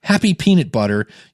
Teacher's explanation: if you put your hand in front of your mouth and say, happy peanut butter, you'll feel a bunch of air go into your hand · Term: plosive